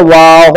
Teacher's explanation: देखो बा में तो होंठ मिल जाते हैं और वाव में होंठ नहीं मिलते, तो पढ़ा जाएगा वाव, होंठ मिलने नहीं चाहिए, वाव, होंठ खोले हुए होने चाहिए, वाव।